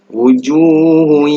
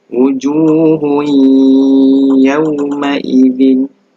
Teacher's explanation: Jadi bunyinya mesti tanwin tu baris hadapan dimasukkan ke dalam huruf ya. Wujuhun, dia mesti didengungkan. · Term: idgham ma'al ghunnah